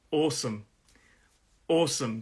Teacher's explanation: It's a 2-syllable word, and the stress is on that first syllable.